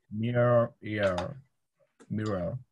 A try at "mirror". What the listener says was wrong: Mirror, you just did it.